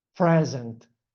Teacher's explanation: if I put the stress on the first syllable is present, that it means a gift. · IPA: /ˈprez.ənt/